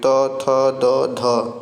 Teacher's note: दंत व्यंजन में कौन से आएंगे? त वर्ग के हो जाएंगे